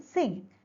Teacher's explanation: And the back of the tongue touches the velum. At the same time, the soft palate is lowered to allow the nasal passage of air. Ng is voiced as the vocal cords are vibrating. · Ng is voiced velar nasal.